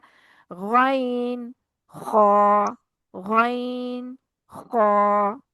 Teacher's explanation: चाहे मोटे हरूफ कह लें चाहे पुर हरूफ कह लें। तो गैन और ख गले की खराश के साथ अदा होता है। इसको आपने अच्छे तरीके से ख की तरह अदा नहीं करना।